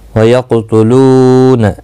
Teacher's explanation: قاف مستعلیہ ہے، پر پڑھا جائے گا، ساکن بھی ہے، اس پر قلقلہ بھی ہوگا۔ لو واو مدہ ہے، ایک الف کی مقدار کے برابر کھینچ کر پڑھیں گے۔